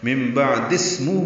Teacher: ہو کو ہم لمبا کر رہے ہیں کیونکہ یہ مد صلہ ہے